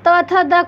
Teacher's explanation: त थ द को देखें तो इनमें आएगा दंत, इनकी ध्वनियाँ ये दंत की ध्वनियाँ हैं। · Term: दंत ध्वनियाँ